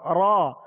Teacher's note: جب را کو ادا کریں تو زبان اس کے جب مخرج میں لگے تو ہلکی سی کپ کپاہٹ ہو